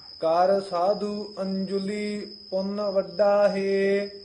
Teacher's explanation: ਅੰਜੁਲੀ ਪੈੜੇ ਉੱਤੇ ਟਿੱਪੀ ਹੈ ਕਸ ਕੇ ਉਚਾਰਨ ਕਰਨਾ ਹੈ